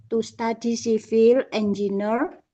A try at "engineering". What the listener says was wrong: Nah, ini bacanya engineer. Ya, bukan engineer tapi engineering.